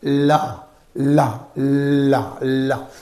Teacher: For lateral consonant, the lateral consonant is produced only by directing airflow around the sides of the tongue